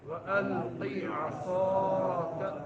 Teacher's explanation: صاد میں سیٹی نکالنی ہے، عصاك فلما میم میں جو ہے غنہ کرنا ہے، غنہ کون سا؟